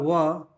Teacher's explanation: तो व का उच्चारण जो है ना ऊपर के ओठ और नीचे के दांत नहीं ऊपर के दांत होता है ऊपर के दांत ऊपर के दांत और नीचे के होठ